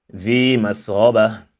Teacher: Pay attention to your ذال here and don't make it sound ذا instead ذي مسغبة.